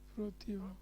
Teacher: অটা ওর মতন হচ্ছে, সংবৃত হয়ে গেছে। তর তম তম প্রত্যয়যুক্ত পদের অন্ত সংবৃত হয়।